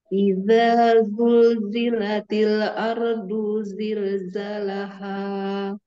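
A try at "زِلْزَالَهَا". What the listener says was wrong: Zanya panjang.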